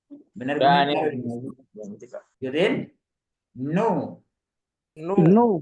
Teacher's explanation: perhatikan ujung lidahnya ketemu dengan gusi ya gusi nu nu panjangkan nuah tetap disebutkan gunahnya sedikit Karen